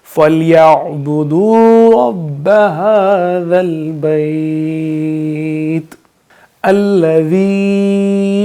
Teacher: हाँ, ये वाली जो है 2 आँखों वाली, इसको हम भारी आवाज़ इसमें आएगी, हा हलक से नहीं आएगी बल्कि भारी आवाज़ आएगी। हा ज़ल, ज़ाल में सीटी की आवाज़ नहीं आएगी